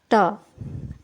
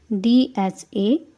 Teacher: sound is produced by placing the blade of the tongue on the back side of the upper teeth. That means these are dental sounds.